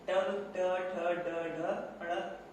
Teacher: टू मतलब ट वर्ग का उच्चारण क्या होगा? ट ठ ड ढ अण। इन पांचों वर्णों का उच्चारण क्या होगा? मूर्धा होगा।